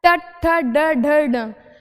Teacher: जब हमारी जीभ तालू से लगकर थोड़ी सी फोल्ड हो जाए, थोड़ी सी मुड़ जाए, तो वो कौन से हो गए, मूर्धन्य व्यंजन।